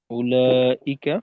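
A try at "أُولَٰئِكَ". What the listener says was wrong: আচ্ছা, এখানে ঔতে টান হবে, হ্যাঁ।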